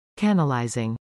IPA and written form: kənəlajzɪŋ (Canalizing)